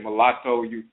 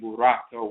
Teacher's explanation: Like you say mulatto, that's a foreign word. Akan people don't say mulatto, they say murato with a rolling R because we don't have a letter L.